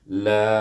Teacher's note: Apabila mat bertemu dengan hamzah dalam dua kalimah, iaitu kalimah a'budu ni, maka la ini hendaklah dibaca panjang. Dibaca panjang, iaitu 4 atau 5 harakah.